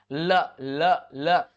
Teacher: ल ल ल, जब भी बोला आपकी जीवा जैसे मुड़ी हुई दिखेगी आपको, तो ल का उच्चारण करते समय हमारे जीभ का दोनों ओर से निकल जाती है, दोनों ओर से मुड़ जाती है, साइड हो जाती है, रास्ता दे देती है।